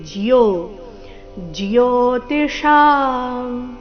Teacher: ಜೋ ಅಂತ ಇಲ್ಲ ಜ ಅಧಿಕ ಯೋ ಸೇರಿ